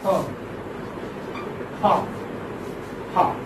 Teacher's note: friction, but without vibration in vocal cords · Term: glottal